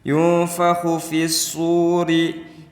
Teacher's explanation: Khu di sini termasuk huruf isti'la, maka harus membacanya di makhraj yang dalam. Kho itu ada di tenggorokan.